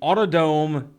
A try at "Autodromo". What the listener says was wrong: Drome. You gotta pronounce that D. It's not Rome, it's Drome.